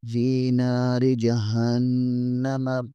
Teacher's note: ہا زبر کے آگے نون مشدد ہے یہاں پر غنہ ہوگا